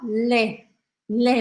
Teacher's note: leite a gente fala lé lé mais aberto